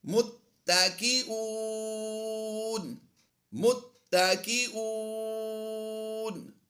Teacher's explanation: واو مدہ کے بعد سکون عارضی ہے، مد عارض کرتے ہوئے لمبا کریں گے